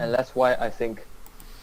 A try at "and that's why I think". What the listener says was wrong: Okay, the rhythm is not bad if you listen to this here, and that's why I think. So, pronunciation is not bad, just the speed's a problem.